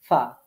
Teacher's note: নিচের ঠোঁটের পেট সামনের উপরের দুই দাঁতের আগার সাথে লাগিয়ে আমরা উচ্চারণ করব ফা, কেমন করে, নরম করে।